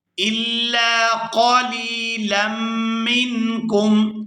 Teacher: یہاں لام کو میم مشدد کے ساتھ ملائیں گے تو غنہ کریں گے